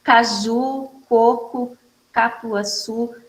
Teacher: vai ter um som oclusivo, vai dar uma pequena explosão de ar